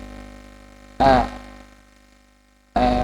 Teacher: huruf tipis yang berharakat fathah dibacanya tidak ee terlalu seperti vokal a pada biasanya sedikit miring ke e